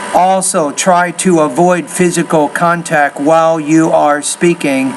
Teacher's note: what you're doing is you're pausing after almost every word there